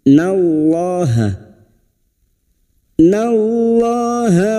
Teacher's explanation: lam jalalah yang didahului fathah kita baca tafkim